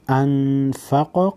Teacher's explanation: क़ाफ को मोटा पढ़ेंगे हुरूफ़ मुस्तालिया में से है और हिलाकर पढ़ेंगे हुरूफ़ क़लक़ला में से है